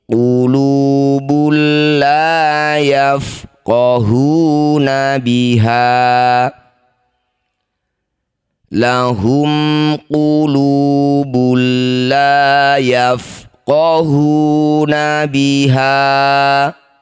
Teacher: Dumah tanwin bertemu lam disebut bacaan namanya idgham bila gunnah. Masukkan bunyi dumah tanwin pada lam tanpa dengung.